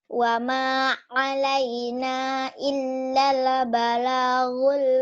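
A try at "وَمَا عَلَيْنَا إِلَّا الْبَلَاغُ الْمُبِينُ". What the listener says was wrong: illa le. Ayo jangan ada e-nya.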